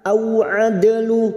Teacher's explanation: Na au adalu, au fathah bertemu sukun kita lunakkan, au adalu, ada dal sukun qalqalah sugroh yang mati asli di tengah kalimat